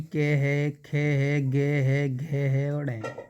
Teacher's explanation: जो के वर्ग वाले हैं दोस्तों ये भाई आपके कंठ से बोले जाते हैं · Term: कंठ व्यंजन